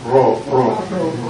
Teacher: like in Spanish Ro uh it's not just Ro but row it's just a little Trill of the tongue